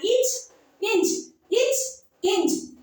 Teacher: அடுத்தது இச், இஞ்ச் ஆகிய இரு மெய்களும் நாவின் இடைப்பகுதி, அதாவது இடைப்பட்ட பகுதினா நடுவுல இருக்கிற பகுதி, நடு அன்னத்தின் இடைப்பகுதியை பொருந்துவதால் பிறக்கின்றன